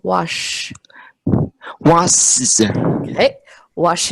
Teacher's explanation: so for your Shh your tongue is pulled in